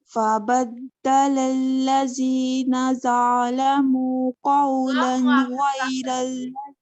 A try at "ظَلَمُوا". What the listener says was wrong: ازور آپ کا ظالم کا وا جو ہے نا اس کے ساتھ ایک الف ایڈ کر رہی ہیں آپ, لمبا نہیں کرنا. وا کو ہیوی رکھیے. ظلموا